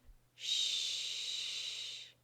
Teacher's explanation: where you think it will go repeat the sound Shh Shh did you feel anything vibrating in your throat no this sound is a voiceless sound now repeat the sound once again this